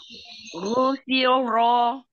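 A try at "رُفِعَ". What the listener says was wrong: Yang dhammahnya sempurnakan, monyongnya.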